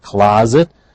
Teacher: the S is pronounced as a zed